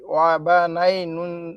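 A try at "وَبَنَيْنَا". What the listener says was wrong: হ্যাঁ, নাটা টান দেন না। ওয়া বা নাই না।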